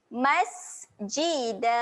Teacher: sin ketika mati sifatnya adalah keluar angin. Keluar sedikit angin.